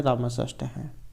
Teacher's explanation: उसके बाद आ जाता है यहाँ पर ये जो रामस प्लस षष्ठ है, ष्टुनष्टु से ये जो सा जो है इसको ये वाला सा हो गया है, ये जो सा जो था इसको मूर्धन्य सा हो गया है।